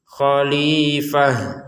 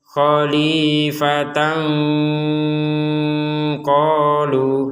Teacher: kalau kita berhenti khalifah menjadi ha. Kalau dilanjutkan khalifatan qalu, jadi tang kembali menjadi ta.